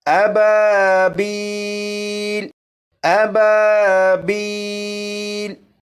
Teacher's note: الف مدہ کو ایک الف کے برابر کھینچ کر پڑھتے ہیں